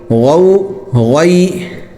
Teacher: غین بھی جو ہے موٹا ہوتا ہے اور حلق سے نکلتا ہے، اس کو گاف کی طرح گین نہیں پڑھنا بلکہ حلق سے غین۔